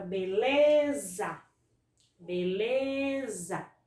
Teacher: Observa novamente que quando eu vou pronunciar a palavra beleza, a sílaba que eu estendo mais, a sílaba que eu intensifico mais é o lê. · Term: paroxítona